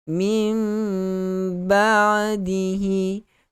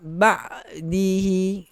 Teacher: iqlab maksudnya tukarkan bunyi nun itu, nun yang mati itu kepada mim. So dia akan jadi mim ba'dihi. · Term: hukum iqlab